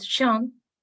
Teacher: la O tiene un sonido entre O y E